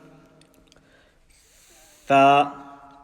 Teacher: tip of the tongue touching the upper central incisors, which is basically the front two teeth, but the teeth on top, not underneath.